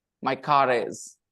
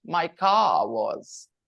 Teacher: Because car ends with a vowel sound R and is starts with a vowel sound. So there are two vowel sounds next to each other. So they'll put a consonant in between to make it smooth. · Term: linking consonant